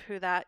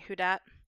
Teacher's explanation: th stopping which is the replacement of your interdental fricatives the orthographic th with a tea or a d probably the